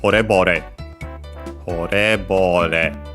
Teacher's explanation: so low, high, high, and then low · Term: accent